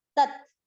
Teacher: त के बाद जो दूसरा त है वो है आधा